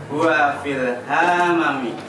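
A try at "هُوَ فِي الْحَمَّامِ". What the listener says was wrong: Panjang pendeknya, ayo. Mimnya ada alifnya akhir. Hammami. Fil alif lam. Kita sudah belajar dibaca alnya. Fil hammami. enggak hanya pendek.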